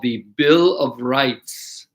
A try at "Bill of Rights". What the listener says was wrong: Yeah, so the S needs to be pronounced, so rights. Bill of Rights.